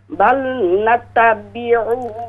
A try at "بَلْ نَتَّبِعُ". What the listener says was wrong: بَلْ نَتَّبِعُ تا پر شد ہے، بَلْ نَتَّبِعُ قالوا بل نتبع، عین پیش عو، اس کو لمبا نہ کریں.